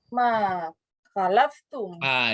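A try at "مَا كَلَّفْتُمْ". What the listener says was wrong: Di sini pakai apa ini sebenarnya? Pakai tasdid ya.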